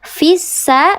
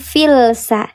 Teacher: Namanya lam syamsiah atau disebut juga idgham. Syamsi dibacanya dia dileburkan langsung ke huruf sin yang bertasydid fissa bukan filsa. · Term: lam syamsiyah